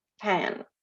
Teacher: the vowel is influenced by the nasal sound behind, so pan. So ini namanya nasalization.